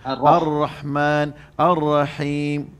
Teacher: pastikan dengan ha pedas. Ar-Rah di sini tengah halkum.